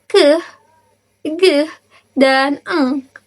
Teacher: Selanjutnya adalah velum atau soft pet. Bunyi ini dihasilkan ketika bagian belakang lidah menyentuh velum atau langit-langit lunak.